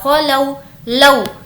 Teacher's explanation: वाव मद्दा में वाव साकिन से पहले पेश होता है और इसको खींच कर पढ़ा जाता है। वाव लीन में वाव साकिन से पहले ज़बर होता है और इसको नहीं खींचेंगे। · यहाँ पर हमें खींचने की ज़रूरत नहीं है क्योंकि ये वाव लीन है। ये जो था ये वाव मद्दा है और ये वाव लीन है।